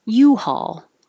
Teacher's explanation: And the general American population is just saying haul, haul. U-Haul is the brand name, and the stress is on U.